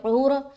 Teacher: عین بھی نکالنا، را کو موٹا بھی رکھنا